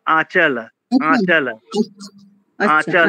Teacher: চ লা একবারে পরিষ্কার অকারান্ত। হসন্ত-টসন্ত কিচ্ছু থাকবে না।